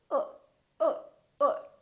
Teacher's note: for the neutral sound the lips are very slightly rounded